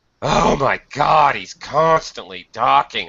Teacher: intonation she's always coming to class late he's constantly talking um it would be very normal in spoken english to emphasize or highlight the adverb